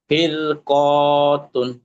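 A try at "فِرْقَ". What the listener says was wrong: জি, ছেড়ে পড়েন। ফির ক, ফির ক। না, তুন হবে না, ছাড়লে যখন ওয়াকফ করবো, ফির ক।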